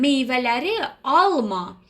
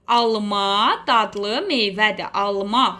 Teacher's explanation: Alma vurğu sondadır bu zaman